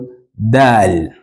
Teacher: the tip of your tongue still touches the roots of your upper teeth